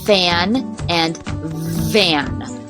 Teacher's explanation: kind of sound has as a labia dental and that's where you use your lower lip and your upper teeth so we only have a fricative like this like fan and fan voiceless and voiced the same · a fricative like this like fan and fan voiceless and voiced the same sound the only difference is voiced and voiceless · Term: labiodental